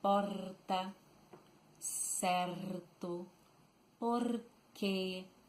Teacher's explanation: The R in most part of Rio Grande do Sul is pronounced using the tip of the tongue vibrating.